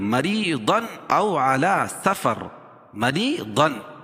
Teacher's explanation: را کے نیچے زیر ہے تو را باریک پڑی جاتی ہے ، مریضن او علی سفر، مریضن، اور یہاں اظہار حلقی کیونکہ